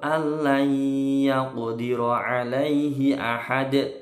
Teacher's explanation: Ro-nya ini ro tebal, tafkhim karena berharokat fathah.